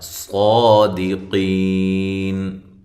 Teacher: صاد کو خوب موٹا پڑھیں اور قاف کو بھی موٹا کریں اور یہ یا مدہ ہے